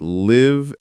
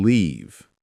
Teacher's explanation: Live has a short I sound. Leave has a long E sound.